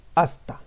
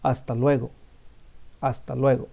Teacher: there's no sound on the H.